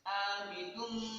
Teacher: dengan cara mendengung, ditekan 2 harokat dengan cara mendengung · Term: idgham biguna